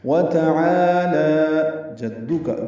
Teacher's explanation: جیم کو دال سے ملانا ہے، دال کاف کو جلدی پڑھنا ہے، باریک پڑھیں گے کاف کو